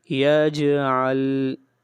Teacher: جیم کے اوپر قلقلہ ہوگا، آواز کو ہلائیں گے۔